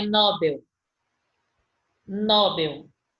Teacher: Ele está dizendo que é oxítona, então é Nobel.